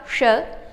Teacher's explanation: श, क्योंकि इसका उच्चारण तालु से किया जाता है, अतः इसकी संज्ञा तालव्य शकार